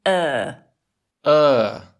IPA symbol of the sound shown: ɜː